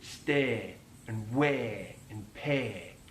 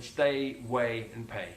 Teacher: he elongates the diphthong A